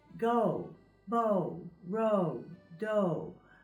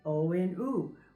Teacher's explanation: with the O sound we say go bow roll dough and we're going between o and ooh we're making a glide between two different sounds now when we do that that's that doing that glide like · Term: diphthong